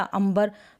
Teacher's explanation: तो यहाँ पे अंग की आवाज़ या ध्वनि या उच्चारण नहीं हो रहा है, अंबर। आधा म हो रहा है क्योंकि ये प वर्ग का है, यानी जो नेक्स्ट जहाँ पे ये अंग की मात्रा अ के ऊपर लगी हुई है, तो हम इससे अगला जो अक्षर है ब, कौन सा है, ब।